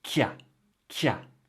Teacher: And the il and the ne in il n'y a also becomes ya. And qu'il y a becomes kia, kia.